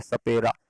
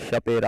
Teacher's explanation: तो दांतों पर से जीभ टकराती है इसलिए दंत है